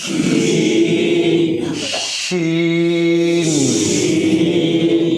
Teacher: इस हर्फ को अदा करते वक्त जबान को दांत में नहीं नहीं लगाना ऊपर तालू